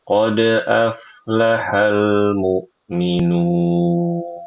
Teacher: Huruf lamnya yang sukun itu jangan diqqalqalah